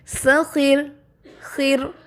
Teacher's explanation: جب آپ نے سخیر پڑھا تو را ساکن ہو گیا اور اس سے پہلے زیر ہے، اس لیے یہاں پہ را باریک ہو جائے گا